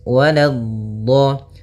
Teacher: la-nya jangan sampai tebal, jangan waladdo, tapi la-nya tipis